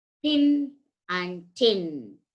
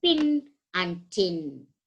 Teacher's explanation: are called voiceless or breathed sounds for example thin and tin while producing thin and tin the vocal cords are drawn apart and there will be no any vibration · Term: voiceless sounds